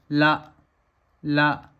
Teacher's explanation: देखिए जब मैं ल बोलूंगा ला ला जब मैं ल बोल रहा हूं तो हवा कम बाहर निकल रही है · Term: अल्पप्राण